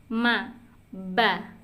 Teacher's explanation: Nah, tapi keduanya ada perbedaan ada perbedaan antara waw yang mulutnya itu terbuka dengan mim dan ba yang posisi mulutnya itu tertutup